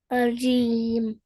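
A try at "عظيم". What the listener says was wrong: हाँ, अज़ीम। ज़ो हैवी करके, ज़ो हैवी लेटर है, अज़ीम।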